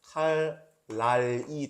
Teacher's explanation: 여기서는 지금 칼날인데 앞에 리을이 왔고 뒤에 니은이 오니까 니은이 리을로 바뀌었죠. 같아진 거예요. 그리고 방향이 지금 앞에 있는 리을이 뒤에 있는 니은에게 영향을 이렇게 줬어요. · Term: 순행동화